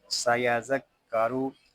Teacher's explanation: सीन ज़बर सा, या ज़ाल ज़बर यज़, सयज़, ज़ाल काफ ज़बर ज़क, सयज़क, काफ ज़बर का, सयज़क्का, रा पेश रू, सयज़क्करू। रा को पूरा पढ़ेंगे क्योंकि रा के ऊपर पेश आ रहा है।